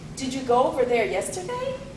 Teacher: you can indicate questions in general english with the rising intonation